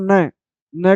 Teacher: तो दंत जो है त वर्ग का उच्चारण स्थान है तो न का उच्चारण स्थान दंत भी हो गए और नासिका भी हो गई